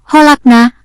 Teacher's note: Membaca yang benar pada lafal kholakna adalah memantul atau qalqalah yakni pada huruf qof yang disukun.